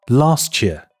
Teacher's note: t▁加▁y▁会发生同化现象中的融合现象▁coalescence